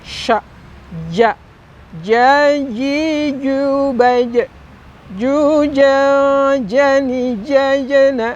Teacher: Ternyata ja ini ada di tengah lidah kita. Kalau ini ibaratnya lidah nih Sobat Inspira, bagian yang tengah ini kan pangkal, ini ujung, nah tengahnya ini dinaikkan.